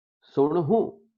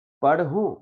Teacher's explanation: ਹਾਹੇ ਨੂੰ ਔਂਕੜੇ ਤੇ ਉੱਤੇ ਨਾਸਕੀ ਉਚਾਰਨ ਹੋਏਗਾ